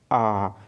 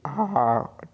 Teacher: तो भाई आ तो बोल रहा हूँ, तो उच्चारण में क्या हो रहा है, मुख जो है पूरा खुल रहा है, पूरा खुल रहा है, और जीभ जो है ऊपर से घूम करके नीचे में आके बैठ जा रहा है। देखिए आ, ठीक है, आप भी उच्चारण करके देखिए, आपको पता चल जाएगा। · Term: विविध